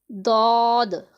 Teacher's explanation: दौद, इसे हरूफे हाफिया का नाम दिया गया है। ज़ुबान की करवट और ऊपर की दाढ़ों की जड़ से अदा होता है।